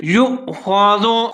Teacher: آگے حمزہ آ رہا ہے، حمزہ کے اوپر ساکن ہے تو یا اور حمزہ دونوں ملا کے پڑھیں گے لیکن ایک جھٹکے کے ساتھ پڑھیں گے